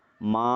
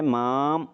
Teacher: അപ്പോൾ ഇവിടെ മാം എന്ന് ചിലർ ഉച്ചരിക്കാറുണ്ട്, പറയാറുണ്ട്. അപ്പോൾ മാം എന്ന് പറയാൻ പാടില്ല, ചുണ്ടുകൂടാൻ പാടില്ല. ഇവിടെ മാ എന്നുള്ളത് മാത്രമാണ്.